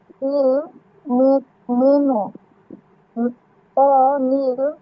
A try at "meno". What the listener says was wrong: এটা মিনো না, এটা হবে মেনো, মেনো।